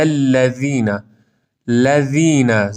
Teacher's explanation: ذال نوک زبان دندان‌های صنایای بالا همراه با ارتعاش صوتی